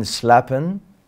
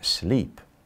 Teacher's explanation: the long A is today pronounced as E. So that's why slappen became sleep.